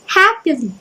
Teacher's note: So stress followed by 2 unstressed. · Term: dactyl